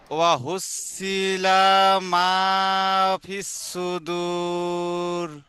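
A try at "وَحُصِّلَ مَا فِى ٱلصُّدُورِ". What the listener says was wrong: ও হৌসিলা বলে লামে টান হবে না, লামের উপর জাবার। ও হৌসিলা, এই জাবার যে পেশগুলো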